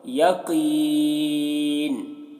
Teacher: قاف کی آواز موٹی ہوگی